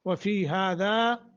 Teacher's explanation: وفی حروف مدہ، ہذا دونوں جگہیں ایک ایک سیکنڈ کی مد کریں گے۔ لیکون الرسول، لیکون الرسول، را کو موٹا، شہیدن علیکم، شہیدن نون تنوین کے بعد عین ہے، اخفانی اظہار کریں گے۔